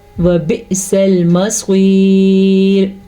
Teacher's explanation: حمزہ کے اوپر ساکن ہے، حمزہ پہ جھٹکا پیدا ہوگا